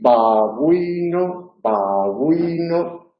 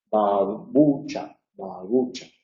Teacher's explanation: Si decís babuino, babuino, veréis que la primera, que es posición inicial, es una oclusión total, mientras que la segunda, los labios se aproximan mucho, mucho, mucho, mucho, pero no llegan a ocluir totalmente la salida del aire